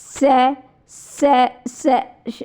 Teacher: तो ये क्या है, जब हम इनका से का उच्चारण कर रहे हैं तो उष्मा क्या है, उष्मा जैसे घर्षण के साथ हवा निकल रही, भाई रगड़ हो रही है ना, घर्षण हो रहा है ना जब आप उच्चारण कर रहे हो, तो इसलिए इसे उष्म व्यंजन कहा जाता है।